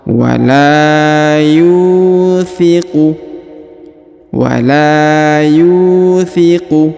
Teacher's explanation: huruf Yu dipanjangkan dua harakat karena di depannya terdapat wau sukun